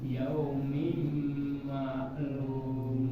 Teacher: Tanwin ketemu huruf mim itu udah masuk, habis itu jangan langsung pindah, tapi ditahan. Ya, adanya ditahan.